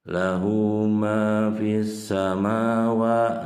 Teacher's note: Jadi lamnya tidak dibaca. Fis langsung aja huruf yang sinnya. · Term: alif lam samsiah